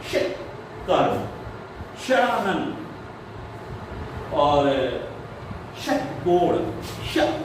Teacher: जब बोलेंगे तो इसमें आपकी जीभ जो है वो पीछे मूर्धा में चली जाएगी, और तब इसमें ये आवाज आपको सुनाई देगी। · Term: मूर्धन्य शाह